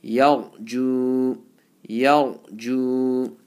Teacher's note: ya is empty mouth, ra is full mouth. So you have to blend it.